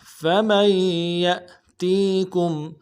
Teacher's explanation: زور دیں گے، اگلے یا کو حمزہ کے ساتھ ملائیں گے، حمزہ جھٹکا دیں گے، حمزہ ساکن ہے ، فمن یأتیکم تا کو یا کے ساتھ ملانا ہے، یا